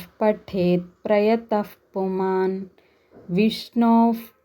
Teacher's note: ఇక్కడ 'యమ్' తర్వాత 'ప' వచ్చింది , మరియు ఇక్కడ ' ప్రయాత' తర్వాత 'పు' వచ్చి, ఆ తర్వాత విసర్గ ఉంది. కాబట్టి, 'మ్' లేదా 'య' తర్వాత ఒక విసర్గ, ఆపై 'ప' ఉన్నందున, మనం ఆ విసర్గను 'ఫ' అని ఉచ్చరించాలి.